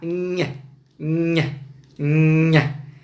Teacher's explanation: O fonema, isso é curioso, o fonema que é produzido ortograficamente pelo dígrafo NH, nha, nha, nha, também é um fonema oclusivo, só que esse é um fonema palatal, isto é, ele é articulado aqui nessa região que grosseiramente a gente pode chamar de céu da boca. A língua toca no céu da boca.